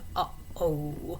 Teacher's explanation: A glottal stop, which would be actually making the vocal folds snap together for a second, would be that sound uh-oh, and it's definitely a voiced sound.